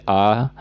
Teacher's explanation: विवृत स्वर को बोलने पर मुंह सबसे ज्यादा खुलता है।